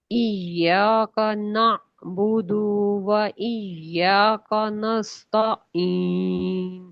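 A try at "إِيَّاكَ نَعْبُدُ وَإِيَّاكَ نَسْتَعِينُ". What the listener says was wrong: अच्छा देखिएगा, ना बुदू हमजा आ गई दरमियान में, जबकि है आइन, आइन की आवाज चलेगी, हमजा की आवाज में रुकावट आती है, यानी झटका आता है हल्का सा।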